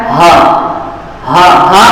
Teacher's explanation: تو ہا جو ہے حلق کے آخری حصے سے ہا نکلتا ہے